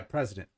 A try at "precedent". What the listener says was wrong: Precedent. Sounded like you said president. Precedent.